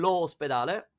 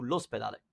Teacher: instead of saying lo ospedale, which would have a double O, which sounds odd, we just shorten it to l'ospedale